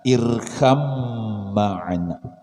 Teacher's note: Irkab ma'ana. Bacaannya irkam ma'ana. Kenapa baknya hilang, bertemu mim, ya. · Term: idgham mutajanisain